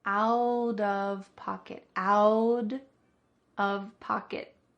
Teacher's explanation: a t between two vowels is going to change to a D sound this is called a flap T usually because the T the t is changing to a d